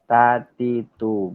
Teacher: keluarnya angin atau udara ketika kita mengucapkan huruf ta